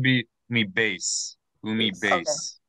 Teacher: this word as opposed to the standard modern Hebrew pronunciation is I pronounced the Tav as a th instead of a regular T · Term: ashkanazi